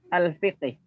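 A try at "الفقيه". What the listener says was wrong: Bukan, Al-Faqih, ya. Kalau Al-Fiqhi tidak ada ya-nya. Kalau ada ya-nya Al-Faqih bacanya.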